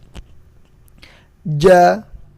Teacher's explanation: Apa yang membedakan antara jim, shin, ya? Ya, kalau jim itu lidah bagian tengahnya nempel ke langit-langit